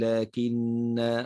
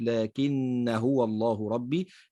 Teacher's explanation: قول الله تعالى لكن هنا الألف عليها الصفر المستطيل، فعند الوقف تثبت الألف نقول لكن وقفا، وعند الوصل تحذف